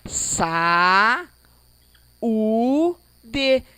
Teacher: Esta é a regrinha do hiato. São duas vogais, porém, em sílaba separada.